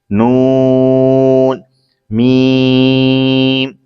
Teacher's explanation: نون زبان کا کنارہ دانتوں کی جڑ کی تالو کی جانب سے ادا ہوتا ہے، یا پھر نئے مدنی قاعدے میں لکھا ہوا ہے وہ یہ ہے زبان کا کنارہ اور انیاب سے ثنایا تک کے دانتوں کی جڑوں سے ادا ہوتا ہے۔